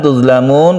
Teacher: izhar syafawi bukan Qalqalah jangan dipantulkan